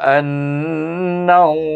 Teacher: Baik perhatikan hamzah alif nun bertasyd baca dengan wajibul ghunah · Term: wajib bergunnah